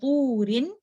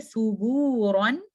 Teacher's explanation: جب واو ساکن ہوگا اور اس سے پہلے پیش ہے تو آپ نے تھوڑا سا لمبا کر کے اس کو پڑھنا ہے، اور یہ واو آپ کا آئے گا empty space of throat and mouth سے. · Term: واو مد